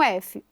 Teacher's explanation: Se eu faço sem som, eu tenho um F. Ou seja, só tem ar passando, não tem vibração de pregas vocais.